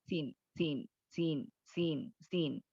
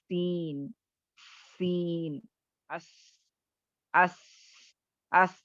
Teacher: ये हुरूफ अपने मखरज से सीटी की तरह तेज बारीक आवाज से अदा होते हैं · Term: सफीर